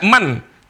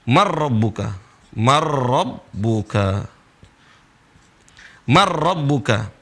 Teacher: kalau tempat keluarnya, mahrojnya berdekatan, maka huruf pertama itu melebur, hilang ke huruf kedua, yaitu huruf ro. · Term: idgham